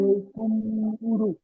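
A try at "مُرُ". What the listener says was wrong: মুরু বলবেন না, মুর।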